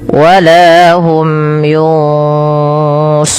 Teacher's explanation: kita tebalkan karena dia bertemu dengan huruf shad yang di mana shad ada huruf isti'la. Istilah yang itu terangkatnya pangkal lidah dan dia juga idbaq.